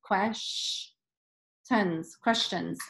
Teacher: Okay, this part's tricky, so I might get help here. Quesh, the S and T together, it's making a sh sound, which is interesting